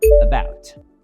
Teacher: The first A sounds like uh. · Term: schwa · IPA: /ə/